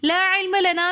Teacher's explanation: لا علم لنا میں مد منفصل ہو رہی ہے تو اس وجہ سے ہم اس کو 3 الف کی مقدار کھینچ کر پڑھیں گے۔